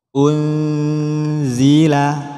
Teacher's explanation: huruf antara idhar dan idgham unzila kembali lagi pada intinya memasukkan suara Nun pada Za ketika Nun dilafazkan sekaligus sudah siap melafazkan Za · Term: ikhfa